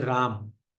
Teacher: तो लेकिन गाते से हम लोग बोलते हैं राम। राम माने कि म हलंत हो जाता है